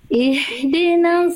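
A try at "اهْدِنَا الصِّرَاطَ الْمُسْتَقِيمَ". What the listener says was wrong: Oke Bunda sadnya disempurnakan Bunda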